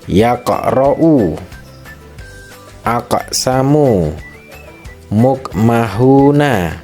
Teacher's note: Cara membacanya dengan pantulan yang tidak terlalu kuat · huruf qaf adalah huruf qalqalah yang berharokat sukun atau matinya asli, sehingga bacaannya harus terang dan memantul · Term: qalqalah sughra